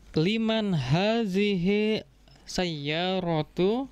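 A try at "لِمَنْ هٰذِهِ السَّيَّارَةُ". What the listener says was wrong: Iya, liman disambung bacanya. Liman hadhis sayyaratu karena ada alif lamnya.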